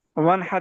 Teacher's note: फिर नून को जाहिर करेंगे, गुन्ना नहीं करेंगे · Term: इजहार